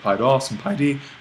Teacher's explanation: a lot of these nominatives like to accent the second syllable of their genitive and dative paidos and paidi